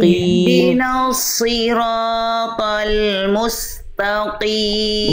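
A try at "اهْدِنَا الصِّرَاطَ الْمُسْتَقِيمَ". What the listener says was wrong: Bukan musta. Jangan pangkal dia jangan naik, musta. Tak, ringan. Ihdinas siratal musta. Ihdinas siratal musta. Bukan musta.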